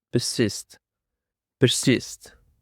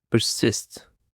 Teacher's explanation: The stress is on the second syllable.